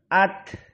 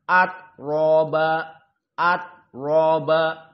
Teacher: Di saat disukunkan dia harus dikeluarkan dibuang nafasnya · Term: hams